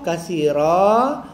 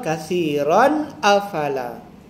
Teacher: Bila wakaf katsira, bila wasal katsiran afala